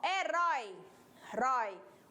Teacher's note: primeiro vogal, depois a semivogal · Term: ditongo também, ele pode ser decrescente